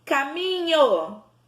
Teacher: A sílaba que saiu mais forte? O mi. Então, mi é a nossa sílaba tônica.